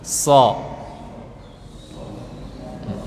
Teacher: Karena so huruf tebal, maka pangkal lidah atau bagian belakang lidah naik ke atas.